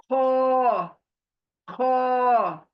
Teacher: इसका मखरज हमारा ऊपर हलक, ऊपरी हलक, फर्स्ट पार्ट हलक का, ये ख लेटर निकलना है वहां से। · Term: मोटी आवाज